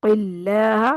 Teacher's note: क़ाफ को मोटा करना है, क़िल्लाह, और लाम को बारीक रखना है